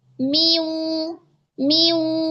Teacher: Pada mi kasrah disempurnakan dulu, dibaca dulu harakatnya. Mi baru ke wau.